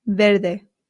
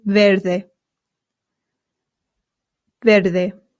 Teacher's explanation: the V in Spain makes a light B sound. Verde. However, in Latin America, it does make more of the English V sound.